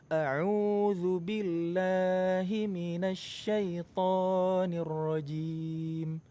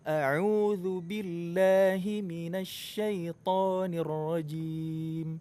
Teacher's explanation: Mad tabi'inya kelebihan, lebih dari 2 harokat. Dan ini keliru.